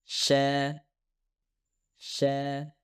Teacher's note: Shin dihasilkan oleh gesekan udara yang melewati ruang kecil yang terbentuk di antara langit-langit keras dan bagian tengah lidah.